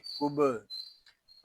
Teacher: یہاں با ساکن ہے، اس میں کلکلا خوب ظاہر کریں گے. اس کو کب ایسے نہیں پڑھیں گے، اس کو پڑھیں گے کب.